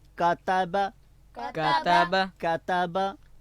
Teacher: یہاں پہ کاف پہلے ہے، تا بعد میں ہے، دونوں باریک پڑھیں گے